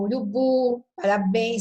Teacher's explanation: E a sílaba tônica aí é a última. Por quê? Porque eu começo a contar do fim para o começo.